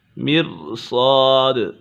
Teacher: صاد پر ہے، حرف مستعلیٰ میں سے ہے اور دال کے اوپر قلقلہ ہو رہا ہے